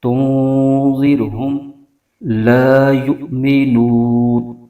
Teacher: نون ساکن کے بعد حرف ذال ہے تو یہاں بھی اخفا کا قاعدہ ہو رہا ہے، تو یہاں بھی غنہ کریں گے۔ تنذرہم لا یؤمنون، لا میں الف مدہ ہو رہا ہے، اس کو ایک الف لمبا کھینچیں گے، اور یا کے بعد حمزہ ساکنہ ہے تو یہاں پر جھٹکا دے کے پڑھیں گے۔